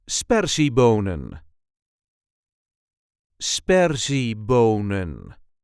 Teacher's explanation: There is a light emphasis on the first syllable.